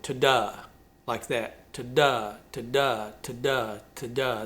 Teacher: It's written in an iambic type of meter, which is an unstressed syllable followed by a stressed syllable.